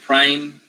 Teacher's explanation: okay prime can you see okay so he gets the voiced so the p is a voiceless stop